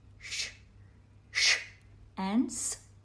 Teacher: The voice box is not engaged in producing these sounds. They are made purely by air hissing through the mouth. So, they are aghosha, unsounded. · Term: sibilants